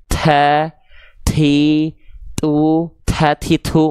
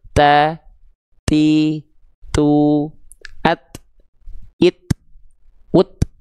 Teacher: Oke, nah tapi huruf ta ini punya sifat yang namanya hams, bukan mengalir nafas. Untuk huruf ta dan huruf kaf, dia punya sifat nafas yang hanya berupa nafasnya percikan saja, bukan sampai mengalir. Jadi ketika kita melafalkan huruf ta, itu harus ada percikannya.